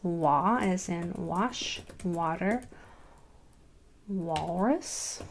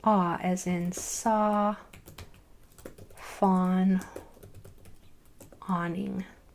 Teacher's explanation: that W is forcing the A to say ah in both instances when it's on either side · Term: W controlled vowel